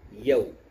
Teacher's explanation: معروف آواز جو اصل واو کی آواز ہے وہ دونوں ہونٹوں کو گول کر کے